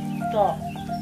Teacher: Yang keempat yaitu huruf to dan do. Kalau huruf to itu dibacanya mahmusan, yaitu berbisik, to. Sedangkan huruf do itu dibacanya majhuron atau lebih jelas.